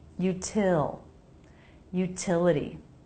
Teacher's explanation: The T here comes between two vowels. That's a flap T unless it begins a stressed syllable, which is what happens here. So it's a true T.